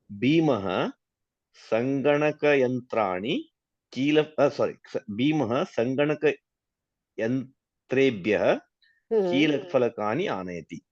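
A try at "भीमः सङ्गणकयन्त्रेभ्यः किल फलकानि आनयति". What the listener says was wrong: Correct.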